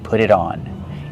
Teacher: pronounce it with a fast D